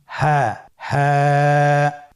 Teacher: হা হরফটি উচ্চারণের ক্ষেত্রে অবশ্যই বারিক হবে এবং এক আলিফ টেনে পড়তে হবে। আপনারা আমার সাথে বলুন হাফটি উচ্চারণের স্থান কন্ঠনালীর শুরু হতে অথবা আমরা যদি আরবিতে বলি হলকের শুরু হতে এটা এই হরফটি উচ্চারিত হয়।